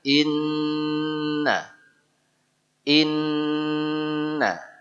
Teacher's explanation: Inna itu Nun tasdid dalam ilmu tajwid namanya ghunnah kedudukannya gunah Akmal gunah yang paling sempurna Nun m tdid asli